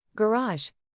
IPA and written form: ɡəˈrɑːʒ (Garage)